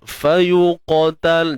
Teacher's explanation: Fayuqatal, dan jangan lupa huruf qaf tebal. Angkat pangkal lidah untuk hasilkan suara tebal. Dan memang makhraj qaf pun pangkal lidah kan naik ke langit kan.